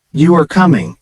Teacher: the tone is more neutral because it's a statement